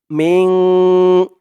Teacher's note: ইখফা গুন্নাটা নাকের ভিতরে লুকিয়ে করতে হয়